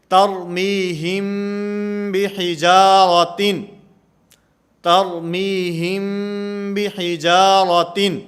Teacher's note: میم ساکن کے بعد اگر با آئے گی تو یہاں پر اخفا ہوگا، جیسے ترمیہم بحجارۃ، ترمیہم بحجارۃ یہاں پر اخفا مال غنہ کا معنی غنہ بھی کریں گے، آواز کو ناک کے اندر بھی لے جائیں گے اور با کو ادا کرتے ہوئے یہ ہونٹوں سے نرمی کے ساتھ ادا کی جائے گی